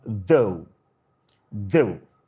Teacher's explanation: The voiced dental fricative with ew, a diphthong.